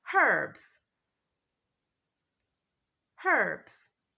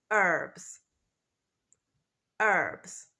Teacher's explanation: So in British English, the first letter, the H, is pronounced.